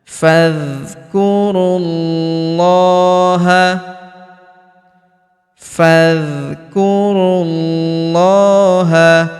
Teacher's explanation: huruf ru langsung sambung masuk ke huruf lam pada lafaz Allah atau lafzul jalalah kita tahan dan tekan karena terdapat tanda tasdid di atasnya